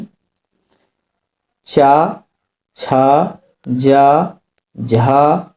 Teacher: च वर्ग का उच्चारण होता है तालू से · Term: तालु वर्ण